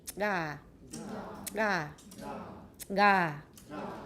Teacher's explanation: we had a velar voiced stop g